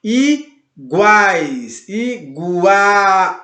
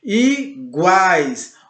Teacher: Olha como o A ele sai mais forte, ele sai mais potente, mais presente. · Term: tritongo